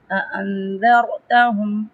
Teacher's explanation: یہاں پہ اخفا ہوگا، ناک میں آواز کو ناک میں چھپائیں گے